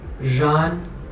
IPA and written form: ʒan (ژان)